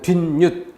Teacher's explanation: 사이소리 2는 발음상 니은음이 생기는 경우, 물론 니은 하나만 생기는 게 아니라 니은 두 개가 생기는 게 있어요. 니은 두 개가 생기는 경우는 어떨 때 앞말에 받침이 없어서 받침자리 니은이 생길 수 있는 여지, 뒷말에 첫소리 자리도 비워져 있어서 여기도 이렇게 니은이 생길 수 있는 자리. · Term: 니은 덧생김